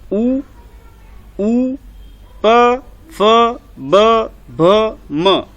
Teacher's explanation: आपके जो होठ हैं वो हिलेंगे और होठ सिकुड़ेंगे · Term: ओष्ठ